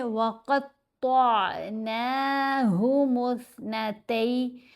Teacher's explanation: यहाँ क़ाफ़ और ता दोनों को मोटा पढ़ेंगे। ये हरूफ मुस्तालिया में से हैं।